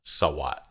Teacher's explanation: Both halves of that word have low tones.